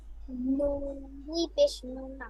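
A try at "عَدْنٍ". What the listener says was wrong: দুই পেশ না, দেখে বলেন।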